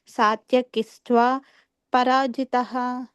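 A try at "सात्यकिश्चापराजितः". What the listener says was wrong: సాత్యకిస్ చాపరాజిత. సాత్యకిస్ చాపరాజిత. ఆ దీర్ఘము షాక్ ఉంది కదా, కానీ చాకి పలకాలి. సాత్యకిస్ సాత్యకిస్ చాపరాజిత. సాత్యకిస్ చాపరాజిత, అపరాజిత యాక్చువల్గా అది. సాత్యకిస్ చాపరాజిత.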